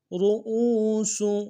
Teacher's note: را کو موٹا کریں گے، حمزہ کو واو کے ساتھ ملانا ہے